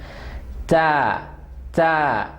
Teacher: first line right hand side تا, تا آواز شارپ ہے اور ہم نے اس کا مخرج بھی پڑھا ہے کہ tip of the tongue will touch behind the front 2 teeth